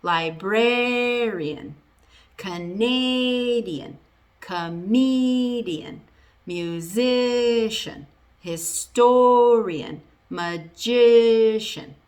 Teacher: when you add the suffix IAN to create a noun, usually a person noun. In these words, the syllable that is stressed is the syllable right before that suffix. So in other words, it's the second to last syllable.